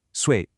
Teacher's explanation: Fourth tone, sharp and falling, sui. It means years of age.